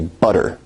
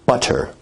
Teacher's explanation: in North American English you say butter. Now as compared to in received pronunciation where you say butter, that involves a full t stop.